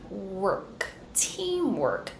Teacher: close your lips for the M team round your lips work bring your tongue all the way back for the r and then finish with the k sound